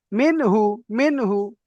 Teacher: নুন সাকিনের পরে হুরুফে হালকির ছয়টি অক্ষরের মধ্য থেকে হা এসেছে তাই নুন সাকিনকে বিনা গুন্না জাহির করে তাড়াতাড়ি পড়তে হবে